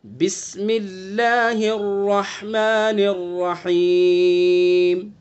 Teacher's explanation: بسم اللہ کے اللہ کے لام کو بھی باریک پڑھیں گے · را کو پر کر کے پڑھیں گے، منہ بھر کے، بسم اللہ اور اس کے بعد ہا کو حلق سے ادا کریں گے، حلق کے بیچ سے، بسم اللہ الرحمن الرحیم، ٹھیک ہے۔